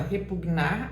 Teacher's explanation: quando você fala repugnar, a sílaba tônica é nar.